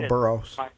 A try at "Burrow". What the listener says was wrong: Burrow. There's no S. You Chicagoan. No, I was just making fun because added his name is Joe Burrow, and then added an S, like every Chicagoan does, where they can't